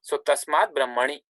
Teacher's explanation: takara becomes dakara because it is followed by a consonant from the third or fourth column